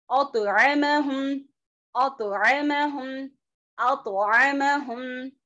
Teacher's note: वीक खलखला मतलब बहुत ज्यादा झटका नहीं होगा।